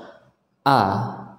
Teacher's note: hamzah berharakat fathah nah ini harus kita baca dengan jelas ya kita keluarkan dari pangkal tenggorokan kita dari tenggorokan bagian bawah a ya harus kita ucapkan a jangan pelit-pelit untuk membuka ya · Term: huruf hamzah